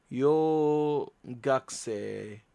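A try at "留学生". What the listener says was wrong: Ryu, the U sound. It sounded like you said Ryo. Ryo Gakusei.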